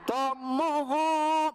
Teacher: kalau dilanjutin hu-nya dibaca Panjang.